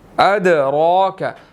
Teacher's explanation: अदराक, दाल साकिन है, कलकला करेंगे, रॉ के ऊपर खड़ी ज़बर है, इसको मोटा अदा करेंगे और 1 सेकंड लंबा करना है